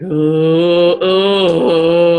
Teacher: it's this really low guttural sound that comes out and that actually helps your pelvic floor muscles to relax right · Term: low guttural tone